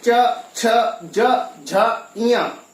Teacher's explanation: इससे आगे चवर्ग, जब हम चवर्ग के 5 वर्णों को बोलेंगे च, छ, ज, झ, ञ, तो हमारे जो जिह्वा का अग्रभाग है वो दांतों के ठीक ऊपर तालू पर जाकर के स्पर्श करता है। इसीलिए इन 5 वर्णों को तालव्य व्यंजन कहा जाता है।